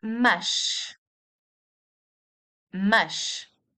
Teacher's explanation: The S in the end of a word produces the sh sound.